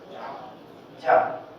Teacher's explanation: زبان کا درمیانی حصہ اور اس کا بالمقابل اوپر کا تالو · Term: جیم کا مخرج